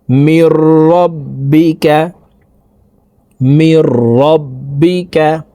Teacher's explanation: নুন সাকিনের পর ইদগামে বেলা গুন্নার হরফ র আসছে এ কারণে এই নুন সাকিন কে গুন্না ছাড়া পড়তে হবে